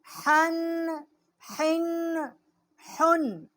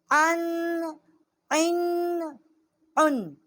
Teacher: یہ حروف جو ہیں، ہا جو ہے یہ چھوٹی ہا ہے حلوے والی، ہا اور عین جو ہے وسط حلق سے اس کا مخرج ہے